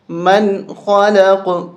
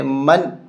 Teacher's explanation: من، خا حرف حلقی ہے، نون ساکن کے بعد اگر حرف حلقی میں سے کوئی حرف آ جائے، یہاں پر خارا، اس لیے نون پہ غنہ نہیں کریں گے، من پڑھیں گے